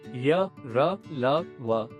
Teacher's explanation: अंतस्थ व्यंजन जिनमें जीहवा किसी भाग को पूरी तरह नहीं छूती और वायु थोड़ी देर रुकती